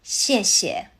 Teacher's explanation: The second shie softens into a neutral tone. >> [clears throat] >> So, it comes out light and quick.